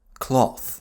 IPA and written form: klɔθ (cloth)